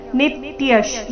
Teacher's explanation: ಅಜೋ ನಿತ್ಯಃ ಶಾಶ್ವತೋऽಯಂ ಪುರಾಣೋ ಅಜೋ ನಿತ್ಯಃ ಶಾಶ್ವತೋऽಯಂ ನಿತ್ಯಶ್ ನಿ ಮೇಲೆ ಆಘಾತ ವಿಸರ್ಗದ ಉಚ್ಚಾರಣೆ ಅರ್ಧಶ ರೀತಿ ನಿತ್ಯಃ ಶಾಶ್ವತೋ ಶಾಶ್ವತೋ ಶಾ ದೀರ್ಘ ಬಂದು ಆಘಾತ ತೋ ನಂತರ ಅವಗ್ರಹ ಇದೆ